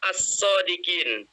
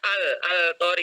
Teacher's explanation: Maka alif lamnya tidak dibaca jelas. Dia masuk ke huruf di depannya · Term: alif lam syamsiyah